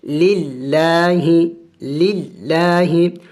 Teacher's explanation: تو جب لفظ اللہ سے پہلے زیر آ جائے تو پھر لفظ اللہ کو باریک پڑھا جائے گا